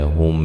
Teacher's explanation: ہم میم ساکن کا اظہار ہے، غنہ نہیں کریں گے